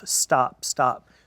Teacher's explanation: That T right there, that doesn't have that puff, stop, stop.